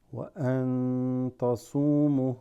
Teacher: noon sakina followed by a ta. That ta makes this ikhfa.